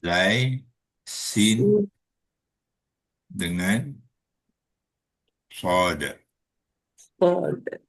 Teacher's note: 3 huruf semuanya hujung lidah tu ditekan pada belakang gigi bawah.